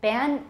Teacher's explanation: is that a velar nasal no it's alveolar nasal